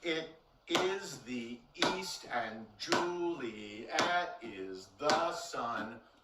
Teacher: um 11 beats the 11th beat has to be unstressed and sun is not an unstressed syllable it's a fully stressed syllable · And sun is not an unstressed syllable. It's a fully stressed syllable. So we have to honor it, and it has to be the 10th syllable.